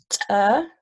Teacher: Glottalized, in which you have not only the stop that you're making with that's mentioned, like bilabial with your lips, but also you're getting your glottis involved, and you're adding air pressure between the two stops, then a release